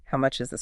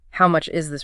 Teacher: The difference between asking the price normally, how much is this falling, and expressing shock, how much is this rising, is huge in terms of politeness.